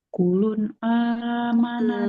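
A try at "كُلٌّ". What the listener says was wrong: Nah, coba kita lihat di atas huruf lam di situ ada tasdidnya.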